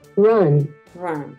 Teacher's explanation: Entre una A y una O. Es un sonido schwa, es un sonido distinto.